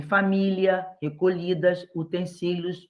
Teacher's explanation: o som do LI e do LH, em algumas palavras, é parecido